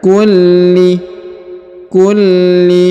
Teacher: huruf lam ditahan dan ditekan